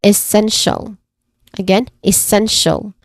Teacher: The stressed syllable here is the second syllable, which is sen.